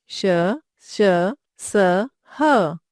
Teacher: इन व्यंजनों का उच्चारण करते समय मुंह से गर्म श्वास निकलता है इसलिए इन्हें उष्म व्यंजन कहा जाता है।